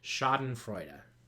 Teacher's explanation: we end with another one of those schwas, so this would be pronounced as duh